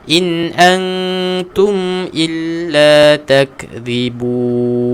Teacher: Huruf zal, keluarkan hujung lidah kita, angkatkan ke gigi kacip atas.